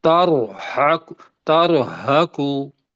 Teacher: ہا کو حلق سے نکالیں گے، قاف ہے ہی موٹا، اگر اوپر پیش ہے تو وہ موٹا پڑا جائے گا، تر حق، تر حقو، پڑھیں تر حقو تارہقو۔